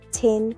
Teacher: level tone, flat, and steady, like conviction